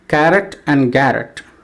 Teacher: rhyming words carrot and garrett in carrot we have two syllables the first syllable is stressed and the second syllable is unstressed and in garrett also we have two syllables the first syllable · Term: feminine rhyme